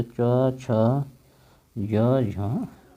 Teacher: तो याद रख ले एक बात कि च वर्ग जो होता है, च वर्ग उसको कहा जाता है स्पर्श संघर्षी